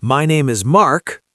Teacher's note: upspeak when the voice goes up at the end of a sentence